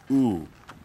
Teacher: there would have to be a consonant that precedes it and that consonant would have to be a glottal stop and the consonant for the glottal stop is the aleph